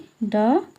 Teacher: मूरधन्य अल्पप्राण घोष व्यंजन वर्ण इनमें से ड है